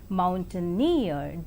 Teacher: in the three syllable word Mountaineer the last syllable is more prominent